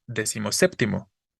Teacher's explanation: cuando decimos decimoséptimo es una sola palabra unimos los dos elementos y recorrimos la tonicidad O más bien le quitamos la tonicidad a décimo y solo